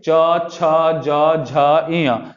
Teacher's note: आगे जो हमारा ये तालु है उसमें जाकर सटेगा। च बोल के देखिए, आपका जो जबान है आगे जो ऊपर छत है उस पे सटेगा।